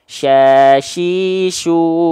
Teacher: ujung lidahnya enggak nempel ke mana-mana · dilafalkan dari tengah lidah diarahkan ke langit-langit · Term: syin